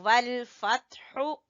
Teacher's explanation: हा गले के दरमियान से, वल फत्हु। और जब वक्फ करेंगे तो कहेंगे वल फत्ह, एंड पे हा की आवाज आए।